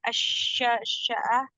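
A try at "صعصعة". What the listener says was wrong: bin Sa'sa'a enggak ada shin, bin Sa'sa'a.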